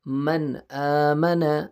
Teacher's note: ابھی یہ نون ساکن ہے، اس کے بعد حروف حلقی ہے، حمزہ ہے تو غنہ نہیں ہوگا